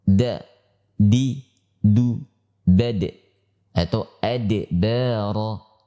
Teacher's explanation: Huruf dal termasuk huruf syiddah, yaitu yang memiliki tekanan kuat.